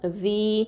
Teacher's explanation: ஜால் கெசரா யா சுக்கூன் ஜி, இது வந்து 2 ஹரக்கத்தை நீட்டணும்